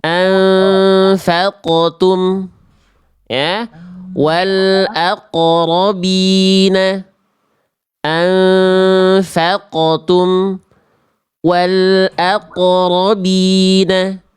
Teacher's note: Qof itu huruf tebal ya. Nah, maka dipantulkan dengan bunyi tebal. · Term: qof sukun